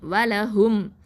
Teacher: இதுஹார் ஷஃபவி, தெளிவாக தான் அந்த மீம் சுக்குனை உச்சரிக்கணும்